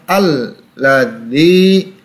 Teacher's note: Dal berhadapan dengan ya sukun ya, maka dibaca panjang 2 harokat. Ini mad tabi'i.